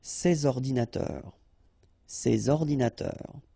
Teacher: you should make the liaison between S and O